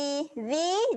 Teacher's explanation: Qalallazi. Zi, jaga makhraj huruf zal, kena keluarkan lidah, jangan lupa. Qalallazi. Zi, keluarkan lidah.